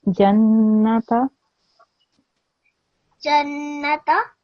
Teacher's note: And when you join these two, there should be a stressing sound, a joining sound, a gluing sound of the jim and the noon for about 2 seconds. So it should be jannata.